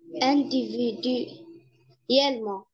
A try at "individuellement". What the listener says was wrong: Très bien.